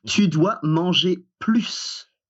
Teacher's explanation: We pronounce the S on plus because it means more